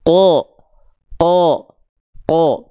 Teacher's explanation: huruf yang tebal itu ketika berharakat fathah dia tidak akan condong pada vokal A tapi dia terdengar seperti vokal o